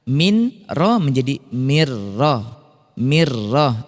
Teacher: Kalau idgham bila gunnah berarti nun sukun atau tanwin ini lebur masuk ke huruf lam atau ro. Nah, ini 100% hilang nunnya.